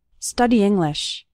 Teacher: Those two words kind of run together. The E from study and the I from English kind of combine.